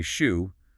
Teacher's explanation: my lips are already rounding for the ooh before I even finish the sh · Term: co-articulation